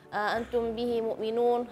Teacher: Antum bihi mu'minun, hamzah di sini tadi kurang tegas bacaan hamzahnya ya.